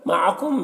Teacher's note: میم میں اظہار شفوی ہو رہا ہے، اسے جلد پڑھنا۔